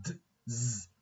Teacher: D, Z are both voiced alveolar sounds.